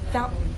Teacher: stop the airflow in your throat some people compare it to hiccups the key is to try holding your breath not with your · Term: glottal stop